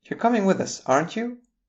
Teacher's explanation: the pitch rises at the end of a statement that is turned into a question with a tag.